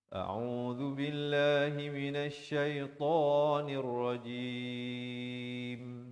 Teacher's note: A'udzu billah, di pangkal kerongkong, ain di pertengahan kerongkong, zal di hujung lidah, lafz jalalah dibaca nipis, dua harakat. Minasyaitan, nun baris atas naik di atas shin yang bersabdu.